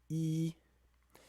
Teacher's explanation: So something like E, that's a high front vowel.